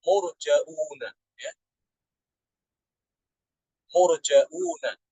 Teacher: Ibnu Amir membaca dengan menambahkan hamzah mufrad, ya, setelah huruf jim. Jadi menjadi murjauna, ya.